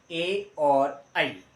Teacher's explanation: कंठ और तालु से दोनों से मिलकर के बोले जाएंगे